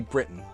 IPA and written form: brɪtn (Britain)